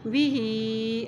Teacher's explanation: हा के नीचे खड़ी ज़ेर भी है और ऊपर मद भी है इसलिए इसको लंबा करेंगे